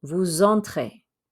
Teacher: we don't normally pronounce that S, but because it's followed by a vowel, it makes a Z sound when it runs into the E.